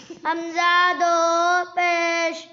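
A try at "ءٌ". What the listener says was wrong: او ہے یا اون ہے؟ دو پیش میں کس کی آواز آتی ہے؟ نون کی. تو وہ کوئی نہیں پڑھی جی.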